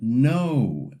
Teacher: It starts with an O and glides into a little oo at the end. In Spanish, this doesn't happen. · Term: dip thongs, diphthong